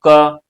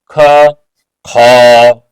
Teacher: अब इसमें ज्यादा ठहराव हो रहा है, प्राणवायु अधिक देर तक ठहरी मुख में, किसमें, ख में और घ में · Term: महाप्राण